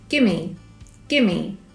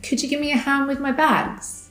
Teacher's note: So when we say the two words together, we add an additional m sound to make gimme.